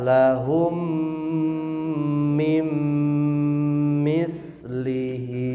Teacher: Lihat lahum ada mim mati, di depannya ada huruf mim. Mimnya berarti dileburkan. Ini disebut idgham mislaini ya.